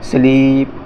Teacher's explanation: ई के उच्चारण को हमने दीर्घ कर दिया है, यानी थोड़ा जोर से लंबे स्वर के लिए बोला है, लंबे समय को बोलते हैं, उससे कहते हैं दीर्घ उच्चारण।